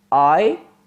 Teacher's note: In I, the lips are open at the beginning and then they spread at the end.